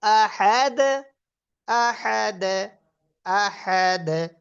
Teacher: তার মধ্যে দাল যে কলকলা তার আওয়াজটা নিচের দিকে যাবে। কুলহু আল্লাহু আহাদে দালের কলকলাটা একটু নিচের দিকে যাবে